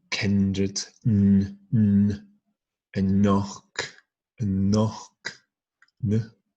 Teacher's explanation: N is a dental